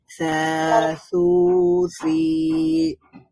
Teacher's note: জিহ্বার অগ্রভাগ সামনের উপরের দুই দাঁতের অগ্রভাগের সাথে টাচ করবে, তারপরে সা উচ্চারিত হবে নরম করে। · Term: সা এর মাখরাজ